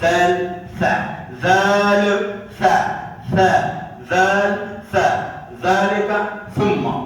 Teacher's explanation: ذال زبان کا سر اوپر دانتوں کے ساتھ